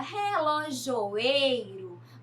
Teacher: na palavra relojoeiro, nós temos o ei mais forte. Então, também é paroxítona.